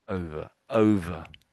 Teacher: It's not really an A sound, but it's closer to an A than it is an ER in British English.